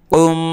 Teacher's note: মিমের উপর তাসদিদ রয়েছে, গুণনা করবে একালিফ।